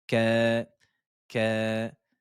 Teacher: prolongation de 2 temps sur le ka, la consonne kef avec sa fatha et le med alif ici